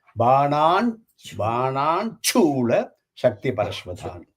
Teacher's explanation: when we combine this Banan and Shulam, will become Banan Chula. That Shu becomes Chu.